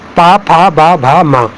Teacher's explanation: ये ओष्ठ मतलब ओष्ठ से बोले जाते हैं